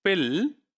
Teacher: So that's the back of the tongue is raised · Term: dark l